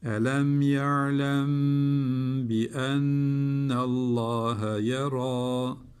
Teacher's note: sakin mim cezimli mimden Sonra B harfi geldiği için tutuyoruz hemen geçmiyoruz. Dudak ihvası diyorduk.